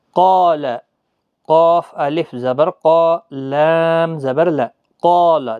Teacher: مستعلیہ حروف مستعلیہ کا قاف ہے تو الف بھی پر پڑھا جائے گا، مد بھی ہے، کھینچنا بھی ہے